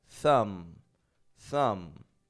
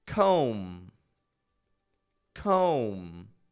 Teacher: someone else's your thumb is spelled t h u m b i don't pronounce that B that b does not come out